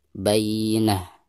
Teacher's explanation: Tak marbutoh apabila diwakafkan maka berubah menjadi hak sukun.